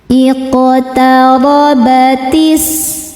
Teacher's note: Ro dibaca secara tafkhim karena berharokat fathah. Cara bacanya ro ditebalkan.